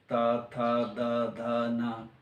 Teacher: यदि तवर्ग का उच्चारण करें तो जीभ का अगला हिस्सा दांत को टच करेगा, त थ द ध न, तो ये दंत वर्ण हो गया।